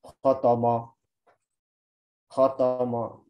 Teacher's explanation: Kalau kita nggak menyempurnakan harokat fathah dengan benar, itu fathahnya bisa nyampur dengan dhammah. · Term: tamzij